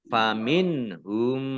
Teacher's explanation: nun sukun bertemu dengan huruf ha, bacaan idhar, dibaca jelas